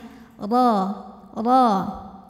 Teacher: Ro, tebal karena harokatnya di atas, pangkal lidah angkat ya. Ro, masuk ke ba langsung tempel, langsung tekan.